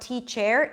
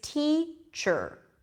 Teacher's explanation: so it's not teach air its teacher sure sure okay so I'm moving from the choose sound to the are immediately · the R takes over the vowel before and connects to the consonant before the E. In this case, it's the ch sound, so it's not teacher, it's teacher, chur.